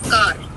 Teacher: We Indians, we pronounce it as car with stress on the R. So we have kind of ending R at the end. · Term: roll our, roll our R's